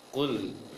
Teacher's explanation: Seperti baca di ayat pertama, ku, yang tebal ada ku-nya, sedangkan lam tidak. Maka ketika baca lam sukunya, bibir jangan sampai membulat. Lepaskan atau dikembalikan bibir secara normal saja.